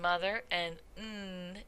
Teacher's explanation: type of manner of articulation is something called a nasal and this involves lowering the soft palate or the velum so that the air goes out the nose